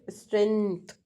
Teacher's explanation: actually in strength there is k sound